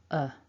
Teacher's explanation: thinking about weak forms of words normally we go to this schwa vowel which is nice and weak the tongue is relaxed in the mouth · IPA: /ə/